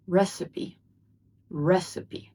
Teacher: The stress is on the first syllable and we also pronounce the last e sound